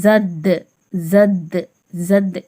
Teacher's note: ஏனென்றால் தால் கல்கலாவின் எழுத்து கொஞ்சம் அசைச்சு மோதணும்